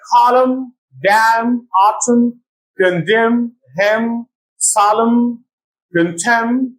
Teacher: n becomes silent after M at the end of words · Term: silent n